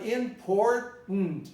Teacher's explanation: you pronounce the R as a retroflex sound.